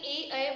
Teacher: ये कंठ व तालव्य यानी तालु दोनों से ही उच्चारित होते हैं।